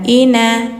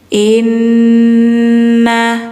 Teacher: Kalau nun yang ada tasydidnya, bacanya harus didengungkan. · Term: Gunnah musyaddadah